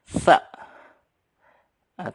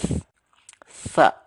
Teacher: Cara melafalkannya sa. Ya, lidahnya sedikit maju, agak keluar, jadi sa. Ditulisnya biasanya ditransliterasi kita dengan TS ya.